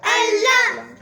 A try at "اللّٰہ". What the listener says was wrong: اللہ نہیں، اللہ. شد کو سٹرس دینا ہے، دباؤ ڈالنا ہے اس کے اوپر. اللہ.